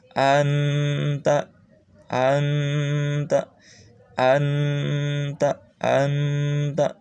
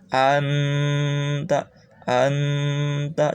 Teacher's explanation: harusnya nun sukun itu n, tapi di sini tidak boleh pol n ya, karena harus samar dibacanya. Seperti ang, tapi ada n-nya, ada ang-nya. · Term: samar-samar dan dengung